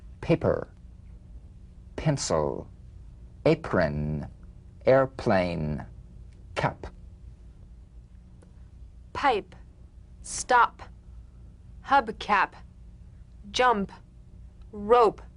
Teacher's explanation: The whispered tap of this drumbeat P is played with a light springing apart of the lips, just like for the B. On the springing away, feel a B in a whisper without any puff of air. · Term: unvoiced labial stop consonant